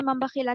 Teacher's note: नून की आवाज को बिल्कुल बदल देना मीम की आवाज से। अब नून की आवाज नहीं आएगी यहाँ पर, सिर्फ मीम की आवाज आएगी। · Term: इक़लाब